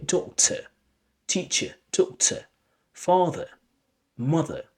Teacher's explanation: at the end of a word where you have er, so you replace it with a weak form schwa sound. This is the short schwa.